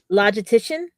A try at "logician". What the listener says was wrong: There's no T. Logician.